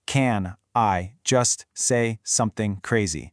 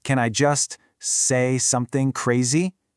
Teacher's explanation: Da-da-dum, da-da-dum. Can I just becomes a quick little lead-up to the first big beat, say. Then something leads us to the next beat, crazy. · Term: natural rhythm